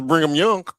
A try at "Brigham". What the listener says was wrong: Brigham. no N in it. It's Brigham.